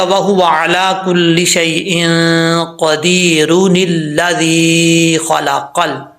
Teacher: یہ جو نون قطنی ہے یہ صرف اور صرف ملانے کی صورت میں پڑھا جاتا ہے